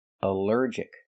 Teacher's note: Here the ALL is not pronounced all, but pronounced like in cup and up, because it's not stressed.